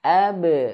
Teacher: Huruf ba pantulkan ab. Pantulannya untuk qalqalah ba ya ke e pantulannya. Ab. Dan ingat qalqalah itu jangan sampai dia tertahan.